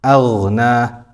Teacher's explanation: the ghain sakina has the sifat of rakhawa. So we continue the sound a little bit.